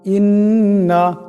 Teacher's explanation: হামজা নুন জির ইন, নুন জবর না, ইন্না। এখানে নুন মুশাদ্দাদ কে এক আলিফ পরিমাণ গুণা করিয়া পড়তে হবে